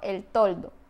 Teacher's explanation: se articula con el ápice de la lengua apoyado en la cara interior de los incisivos